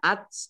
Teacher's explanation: Nah ini tak tahun ini bacanya ats itu agak ada s-nya sedikit. Ya, T-nya ada S-nya sedikit gitu ya, tapi jangan kelihatan sekali. Nanti kalau S-nya banyak, nanti jadi sin ya.